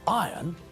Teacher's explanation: The word is spelled I-R-O-N, but when we pronounce the word, we don't pronounce the letter R